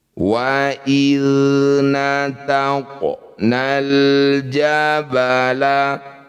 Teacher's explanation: Jadi bunyi qof ini tetap dipantulkan tapi kecil saja. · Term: qalqalah sugrah